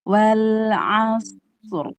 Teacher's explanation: Shadnya tebal dan rakhawah. Ainnya tipis.